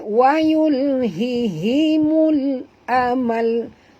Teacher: Okay, mul alif lam qamariyah, bunyikan lam yang mati dengan izharnya jelas ya